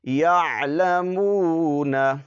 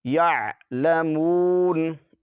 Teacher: جب وقف کریں گے تو نون پر جو زبر ہے اس کو نہیں پڑھیں گے ساکن کر کے